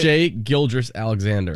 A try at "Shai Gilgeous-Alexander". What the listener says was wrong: There's no R in there. It's Gilgeous Alexander. There's no R in there.